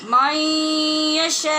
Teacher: نون ساکن کے بعد یا حروف یرمالون میں سے ہے، لہٰذا ادغام غنّے کے ساتھ ہو رہا ہے